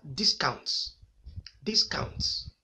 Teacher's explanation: two syllables where the first is unstressed followed by the second